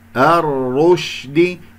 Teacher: الرشد، ولا أسحب ضمة الراء الثانية إلى الشين الساكنة، والشين فيها تفشي وهي يجري فيها الصوت رخوة ويجري فيها النفس مهموسة